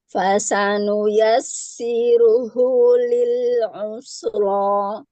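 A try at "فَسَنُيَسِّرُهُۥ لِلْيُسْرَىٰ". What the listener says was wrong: nah, yang domah tebalkan lagi Bu. Ru, siru, siru, ru, siru, siru, ru.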